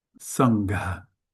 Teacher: this is a aspirated ga, not a normal ga